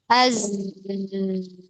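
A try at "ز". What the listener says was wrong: Lidahnya nempelnya biasa, jangan terlalu ditekan banget. Jangan terlalu nempel banget itu.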